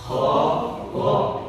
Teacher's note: Kalau getarannya ketika kita mengucapkan kho dan go itu di tengah, berarti salah. Harus getarannya ada di atas. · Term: tenggorokan atas